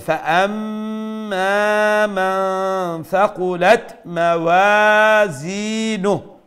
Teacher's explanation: So you need to see here the mim mushaddad. So we'll have to do the ghunna. Then there's the alif madda, so we have to stretch.